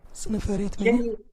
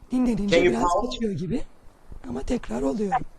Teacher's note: It's a very breathy and rough voice.